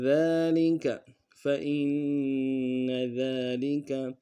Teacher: فَإِنَّ میں حمزہ کو نون کے ساتھ ملانا ہے، نون کے اوپر تشدید زور دیں گے · فَإِنَّ ذَلِكَ میں ذال کے اوپر کھڑا زبر ہے، ایک انداز میں کھینچیں گے